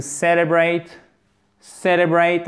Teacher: accent tonique sur la première syllabe